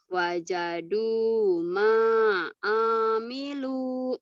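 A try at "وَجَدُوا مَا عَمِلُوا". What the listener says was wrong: A-nya pendek. Du-nya panjang. Wajadu ma'amilu.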